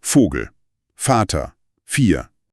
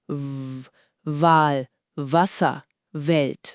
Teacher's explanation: Der Unterschied ist also nur die Stimme. Vogel ist stumm, nur Luft. Wal ist stimmhaft, mit Vibration. Wenn du Wal sagst und deine Hand an den Hals legst, spürst du die Vibration.